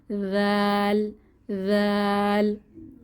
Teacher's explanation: জিহবার আগা দাঁতের আগা নরম আওয়াজ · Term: সফট লেটার